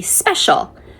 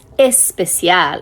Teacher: So the S can be challenging. What my Spanish speakers typically struggle with is they put an E in front of it.